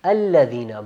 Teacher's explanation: الذین وغیرہ ہوتے ہیں تو ان کو پڑھتے وقت لام کو ہم نے موٹا نہیں پڑھنا تشدید والا نا، الذین نہیں، الذین الذین جیسے لفظ اللہ کا ہوتا ہے نا اس طرح نہیں، الذین باریک، الذین ہم.